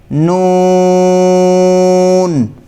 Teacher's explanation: اس حرف کی آواز بھی باریک ہے، موٹی نہیں پڑھنی، اس میں بھی ناک میں آواز نکلتی ہے۔ نون، شروع میں بھی ن اور آخر میں بھی ن، یہ دونوں آوازیں آتی ہیں، نون۔